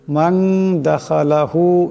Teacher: গতিকে এই নুন সাকিনকেও এক আলিফ পরিমাণ ইকফার গুন্না করিয়া পড়তে হবে